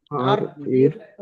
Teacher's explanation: জিহ্বার কিনারার উল্টা পিঠ এবং সামনের উপরের চার দাঁতের গড়ার সাথে লাগিয়ে উচ্চারিত হয়, যেমন র। আর আর দেখেন জিভটা আছে, জিভের এই উল্টা পিঠ কিনারার উল্টা পিঠ সামনের চারটি দাঁতের গড়ার সঙ্গে লেগে উচ্চারিত হবে কি র।